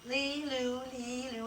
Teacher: all that's happening is that tongue is saying Lee Lou, Lee Lou. It's flipping up and it comes right down behind your teeth.